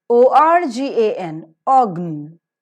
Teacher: R is not pronounced before the consonantal sound.